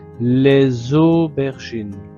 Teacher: liaison, le S de les se transforme en Z.